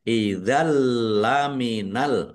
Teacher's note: Fathah tanwin bertemu dengan huruf lam, bacaan idgham bila gunnah, masuk dengan tidak mendengung. Langsung masuk ke huruf lam, ya, tanwinnya tidak dibaca, tetapi tidak mendengung.